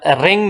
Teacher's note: These sounds are formed by raising the back of the tongue towards the soft palate. ये ऐसा sound है जो कि जुबान के पीछे वाला जो हिस्सा है, सबसे पीछे वाला जो हिस्सा है, और जो सॉफ्ट पैलेट है जो कि हार्ड पैलेट से पीछे होता है, सो इसकी मदद से, इन दोनों जगहों की मदद से ये प्रोड्यूस होता है। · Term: वेलर्स